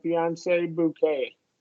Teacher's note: this is a long A, and long A with no T